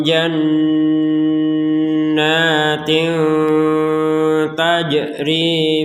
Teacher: kasrain bertemu dengan huruf Ta Maka dibaca dengan samar